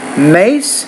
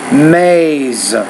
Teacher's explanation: you want to say it shorter because that S is voiceless consonant.